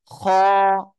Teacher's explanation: গলার শেষ ভাগ থেকে খ উচ্চারিত হবে এক আলিফ টান হবে